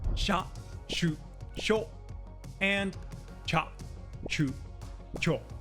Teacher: the 'shi' and 'chi' paired with the small y-kana drop the y-sound and just change the vowel.